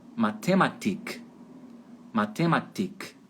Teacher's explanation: Na Alemanha, em boa parte da Alemanha, eles vão colocar a sílaba tônica em cima do I, lá no final.